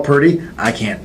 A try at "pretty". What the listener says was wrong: No, you said purdy for sure.